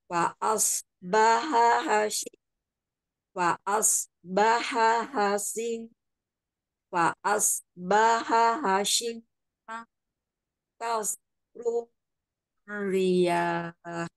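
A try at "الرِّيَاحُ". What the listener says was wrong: Riyah dipanjangkan alif sukun ya. Riyah. Kemudian sodnya tebalkan ujung lidah kan hampir bertemu gigi seri bawah ya mahrajnya sod itu. Kemudian dicekungkan lidah belakangnya supaya tebal.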